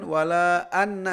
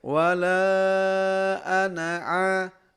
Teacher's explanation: Karena di sana tidak ada tasdid, tidak ada gunnah pertama, kemudian kita bacanya pendek saja.